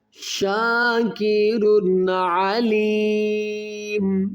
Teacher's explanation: دو پیش کی تنوین کے بعد حروف حلقی میں عین ہے، تو یہاں پر غنہ نہیں کیا جائے گا بلکہ اظہار کریں گے